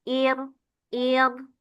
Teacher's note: rnya lebih tipis ketika ro sukunnya didahului kasrah